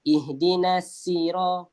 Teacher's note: Isti'la ni maksudnya kita naikkan lidah kita, pangkal lidah kita naikkan sikit, menyebabkan huruf sad ni dia jadi tebal.